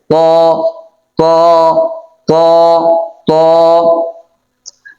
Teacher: তটা হবে 1 আলিফ টান